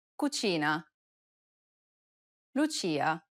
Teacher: notice how the ch sound is more stressed in italian than it is in english · this sound is identical to the ch in church the only difference though is that it's stressed even more in italian than it is in english